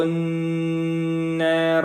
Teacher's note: نون کے اوپر تشدید کی وجہ سے غنہ ہوگا، اور اس کے بعد را کو موٹا کریں گے۔